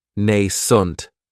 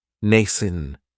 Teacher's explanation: this word has 2 syllables, and the stress is on that first syllable. It has the long A sound, Nascent. That second syllable has that schwa, nascent.